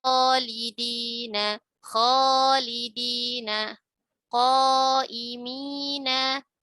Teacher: Nah, kho merupakan huruf tebal ya, huruf isti'la. Maka madnya pun dibaca tebal.